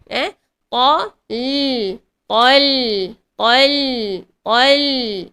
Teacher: So lam tu dibaca dengan jelas, alirkan sedikit sahaja suara, dan dibaca dengan nipis. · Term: lam nipis